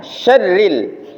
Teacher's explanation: jadi dia sya-nya itu langsung masuk ke ra